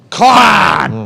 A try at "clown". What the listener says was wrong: no, you would say, clown, clown. You said, you dropped real bass in there like